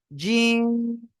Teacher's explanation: জিহ্বার মধ্যখান তার বরাবর উপরে তালুর সঙ্গে লাগিয়ে উচ্চারণ করবেন